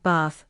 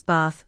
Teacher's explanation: In British English you'll often hear bath with a longer A, while in American English it's bath with a short A.